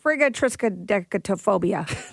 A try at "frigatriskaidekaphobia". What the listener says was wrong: Nope. You added some consonants. So there's triskaidekaphobia and there's frigatriskaidekaphobia.